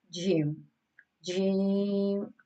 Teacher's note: This is pronounced on the middle part of the tongue, touching the middle part of the palate